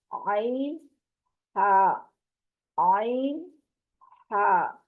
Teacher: یہ دونوں حروف حلق کے درمیان والے حصے سے ادا ہوتے ہیں، زبان کو پیچھے حلق کی طرف مضبوطی سے لے جاتے ہوئے باریک آواز میں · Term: وسط حلق